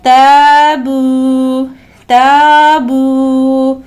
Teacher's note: الف مدہ ہے، اس کے بعد واو مدہ ہے، لہٰذا دونوں میں 2-2 سیکنڈ کی مقدار میں کھینچیں گے